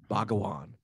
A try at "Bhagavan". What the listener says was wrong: You turned the V in Bhagavan into a W. I picked that up. Bhagavan.